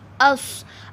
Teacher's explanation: अब इसमें सौद तो मोटा रहेगा मगर जो हमज़ा है वो बारीक ही रहेगा। हमज़ा को आपने मोटा नहीं करना, इस चीज़ का आपने ख्याल रखना है।